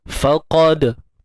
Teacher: Dal bersifat qalqalah, bersifat lantunan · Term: qalqalah sughra